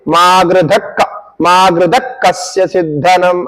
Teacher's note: विसर्ग का आप उच्चारण ना करने से आगे ककार के साथ जुड़ जाएगा उधर रुकना नहीं चाहिए